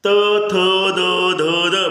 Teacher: ज्या वर्णाचा उच्चार करता वेळी दाताला काय होते जिभेचा स्पर्श होतो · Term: दंत्य